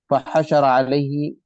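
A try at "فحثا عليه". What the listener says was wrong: وہ را نہیں ہے، فحثا یا ہے وہ.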